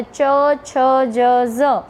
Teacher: જીભનો મધ્યનો ભાગ એ તાળવાના વચ્ચેના ભાગને સ્પર્શે છે અને જે વ્યંજનનું ઉચ્ચારણ થાય છે તેને તાલવ્ય વ્યંજનો કહેવામાં આવે છે.